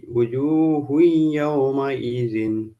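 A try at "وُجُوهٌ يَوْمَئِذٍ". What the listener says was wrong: ঠিকই আছে, ওই হুই বলে একটু ধরে রাখবেন, কারণ এখানে গুণনা হবে।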